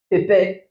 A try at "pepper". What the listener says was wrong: Pepper, that is English. Pepper. You say paper.